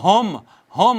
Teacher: حمزہ ہا اقصی حلق سے ادا ہوتی ہے